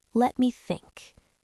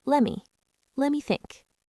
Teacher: native speakers rarely enunciate the T in let and the M in me separately. It blends together into a soft, casual sound.